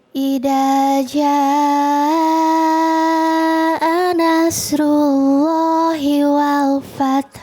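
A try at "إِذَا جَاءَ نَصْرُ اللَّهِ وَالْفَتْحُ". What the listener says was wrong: Masya Allah. Baru ketemu sekali ya. Ntar di rumah lebih cakep.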